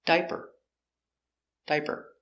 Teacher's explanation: a diaper pronunciation diaper d i d diap ER diaper diaper stress on the first syllable D diaper diaper one diaper two diapers use a zebra sound · Stress on the first syllable, die, diaper.